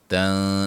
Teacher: تن نون ساکن کا اخفا